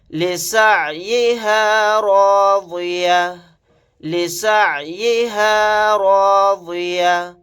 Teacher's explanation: یہاں پر را کو اور ضاد کو موٹا یعنی پر پڑھیں گے